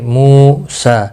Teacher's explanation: مو واو مدہ ہے، ایک الف کے برابر کھینچ کر پڑھیں گے. سین کے اوپر کھڑی زبر ہے, حمزہ کے اوپر بھی کھڑی زبر ہے, ہا کے اوپر بھی کھڑی زبر ہے.